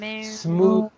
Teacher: remember that Smooth. smooth is an exception. It comes with a voiced TH sound.